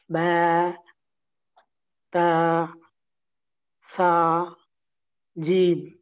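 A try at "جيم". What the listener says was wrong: Okay, this is fine, but try to make your jim stronger. Jim,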